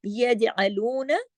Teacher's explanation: नून जबर ना, लू को खींचेंगे, नून को नहीं